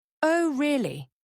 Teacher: Oh, really? Shows surprise or heightened interest. Intonation usually rises.